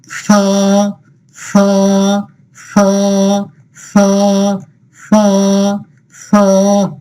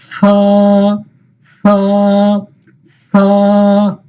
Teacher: জিহ্বার আগা সামনের উপরের দাঁতের আগার সাথে লাগাইতে হবে